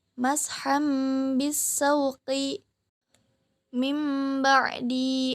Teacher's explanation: iklab, artinya merubah menjadi mim disertai dengan gunnah.